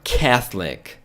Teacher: Eu nunca ia imaginar que esse O não seria pronunciado